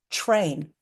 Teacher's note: So there's T and R, but together in words, when we say them together, sometimes that comes out like ch, r.